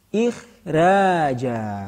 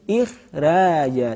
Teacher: Siwal kha, ya, dikecualikan lagi daripada huruf isti'la. Ketika fasilnya berupa huruf kha, meskipun ia huruf isti'la, maka bisa ditarqiqkan.